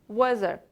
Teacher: O'rtada kelayotgan T va H birgalikda Z deb talaffuz qilinyapti. Ya'ni tilimizni tishimizning orasiga olib kelib Z deb talaffuz qilamiz.